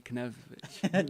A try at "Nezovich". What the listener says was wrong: Nope, that K is silent.